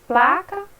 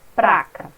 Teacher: a troca do L, né, a R nos grupos consonantais